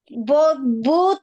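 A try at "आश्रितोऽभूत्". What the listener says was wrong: Bhut, long u. Ashrito Bhut, long u.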